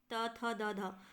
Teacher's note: त थ द ध त वाला जो वर्ग होता है वह हमारा दांत में आ जाएगा